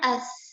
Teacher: Jadi kita baca as. Ketika kita baca as, ya, suara kita berhenti di sini, di ujung gigi seri atas dengan ujung lidah. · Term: taskinul harf